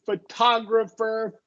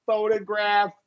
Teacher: So the second O in photographer would be short O. In photograph, it'll be a schwa, the second O.